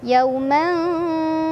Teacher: Yaumantha, ada ikhfa ausat karena ada tanwin fathah bertemu huruf tha. Cara bacanya, tanwinnya disamarkan ke huruf tha sambil berdengung.